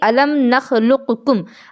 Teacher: جیسے کہ الم نخلقکم، اب جیسے آپ یہاں دیکھ سکتی ہیں کہ قاف اور کاف ہے، اور قاف اور کاف ان دونوں کا مخرج بالکل قریب قریب ہے۔ قاف کا جو مخرج ہے وہ زبان کی جڑ اور تالو کا نرم حصہ ہے، اور کاف کا جو مخرج ہے وہ زبان کی جڑ اور تالو کا سخت حصہ ہے، تو دونوں کا مخرج قریب قریب میں واقع ہے، اس وجہ سے اس کو ادغام متقاربین کہا جائے گا۔